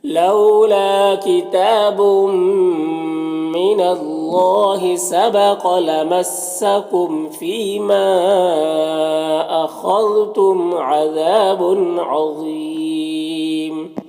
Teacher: عظیم ضا حروف مستعلیہ میں سے پر پڑھیں گے